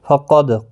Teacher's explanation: دال ساکن پر قلقلہ ہوگا